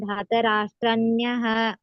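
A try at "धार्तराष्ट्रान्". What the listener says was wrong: ನೀವು ಮೂರನೇ ಲೈನ್ಲ್ಲಿ ದಾರ್ಥ ರಾಷ್ಟ್ರನಹ ನಕೆ ಯವತ್ತಿಲ್ಲ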